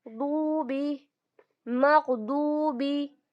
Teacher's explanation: तो वाव मद्दा को 2 काउंट स्ट्रेच करके पढ़ेंगे